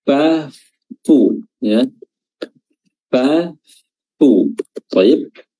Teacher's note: di mana asyafattin itu sebenarnya dia hanya pakai Syafa asufla eh perut bibir bawah yang bertemu dengan ujung gigi seri atas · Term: huruf Fa